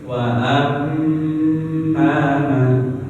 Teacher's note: Nah, kalau ada mim tasdid ditahan.